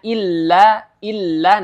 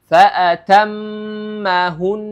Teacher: mim dan Nun yang bertasdid memiliki ghunah di situ